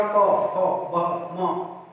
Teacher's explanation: दोनों लिप्स आपके टच किए, होंठ टच किए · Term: ओष्ठ